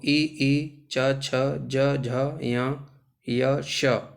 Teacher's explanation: ई, च, छ, ज, झ, य, श, ये सभी हमारे तालु के होते हैं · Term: तालव्य